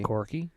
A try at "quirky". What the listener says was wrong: Quirky? You got to really pronounce that U, buddy. You're saying corgi, like a dog.